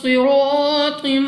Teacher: صاد مستعلیہ میں سے ہے، موٹا پڑھنا ہے منہ اور آواز کو کھول کر